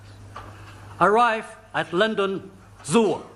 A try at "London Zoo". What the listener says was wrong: There are no O's. That's absolutely correct, but I'm referring to the ends of the words, all right?